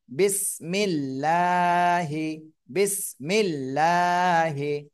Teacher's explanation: আল্লাহ শব্দের ডানে যদি জের থাকে তাহলে চিকুন করে পড়তে হবে